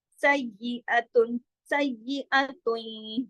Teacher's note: आगे या पे तशदीद की वजह से तनवीन खत्म हो जाएगी, इदगाम हो जाएगा और गुन्ना हो जाएगा